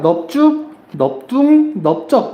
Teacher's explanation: 넙죽, 넙둥, 넓적을 보면은 여기서 리을 비읍 이거는 넙으로 발음이 됩니다